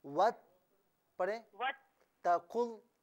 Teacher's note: ता पर जो जबर है ना, तो ता को खींचना नहीं है बिल्कुल